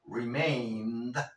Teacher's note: te comes esa e Por qué Porque tienes una n la n es una consonante suave